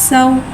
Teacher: सीन को एक अलिफ यानी 3 हरकत के बराबर खींच के पढ़ेंगे। सीन में सीटी को ज़ाहिर करके पढ़ेंगे। सीन के पास ज़बर है, ज़बर को मुँह खोल के अदा करके पढ़ेंगे।